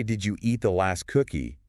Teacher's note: with the emphasis on eat, it might imply that I'm not sure if you actually ate it or maybe you just took it.